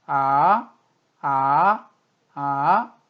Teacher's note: 미의 음높이에서 단숨에 짧고 빠르게 솔의 음높이로 올라간다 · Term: 이성